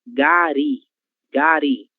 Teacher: a sílaba tônica é ri